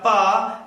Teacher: जैसे बोलिएगा प तो दोनों ओष्ठ एक दूसरे से चिपकेगा फिर अलग होगा तब उच्चारित होगा प